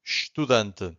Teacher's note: the only thing that you can hear from the first syllable it's a sh